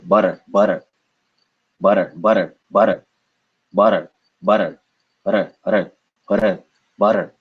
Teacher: it's more of like a slap it's very fast and it doesn't make much contact